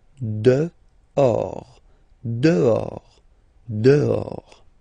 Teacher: Okay, so remember final S not pronounced, and then this H in French doesn't exist phonetically, so you don't pronounce it